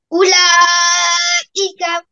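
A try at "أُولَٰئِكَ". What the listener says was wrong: আরো লম্বা করে টানো, আরো টানো। 4 আলিফ টান করো, শোনো।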